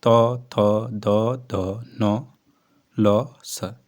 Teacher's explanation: ऐसे व्यंजन जो जीहवा का अग्र भाग नोक द्वारा ऊपर के दांतों को स्पर्श करता है। उच्चारित होते हैं। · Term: दंत व्यंजन